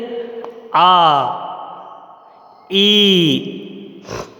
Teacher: इन्हें दीर्घ इसलिए कहा जाता है क्योंकि ह्रस्व स्वर को बोलने में 1 मात्रा का समय लगता है और इनको बोलने में 2 मात्राओं का समय लगता है। इनको बोलने में समय अवधि ज़्यादा प्रयोग में आती है।